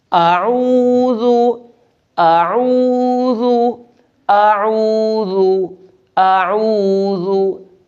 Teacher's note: ذال کو نرمی سے پڑھنا ہے اور حمزہ کے بعد عین بھی ادا کرنا ہے